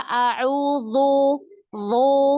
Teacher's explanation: ketika dzal berharokat dhammah, dia tanpa sadar itu menebalkan. Sehingga seperti huruf dha. A'udzu harusnya tipis.